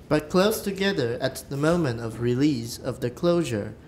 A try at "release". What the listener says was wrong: All right, a lot of you are doing that and still haven't fixed it. It's not release, it's release. It's really short because of the S.